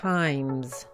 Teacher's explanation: con la palabra times, la S se pronuncia como una Z